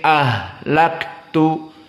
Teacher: ha di sini dalam keadaan rokhawah dan hams, maka harus keluar ha nafas dan keluar suara sehingga dia menjadi sedikit panjang.